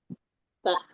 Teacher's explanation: Kalau ta kan ujung lidah bertemu dengan gigi pangkal gigi saya di atas